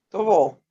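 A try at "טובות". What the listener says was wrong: Tobot. Tobot. Tobot, ¿cierto? Faltó la segunda tet. La segunda T. Ya dijimos, la Hafet Kamets es una O. Y esta va a sonar como O también si luego de ella viene un Hafet Kamets.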